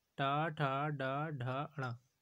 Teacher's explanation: मूर्धा मुंह के भीतर की ऊपरी छत का अगला भाग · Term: मूर्धांत